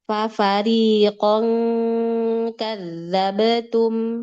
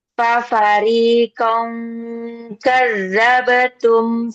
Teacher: ikhfa-nya huruf kaf, nah itu baru lidah belakang dia naik karena makrojnya kaf um, lidah belakang.